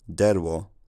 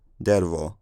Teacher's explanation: that w sound becomes a labiodental approximant. So older derwo becomes dervo.